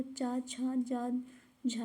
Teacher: और तालव्य से जो तालु यानी कि मुंह के भीतर से जो निकलते हैं वो चा, छा, जा, झा है। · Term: चा वर्ग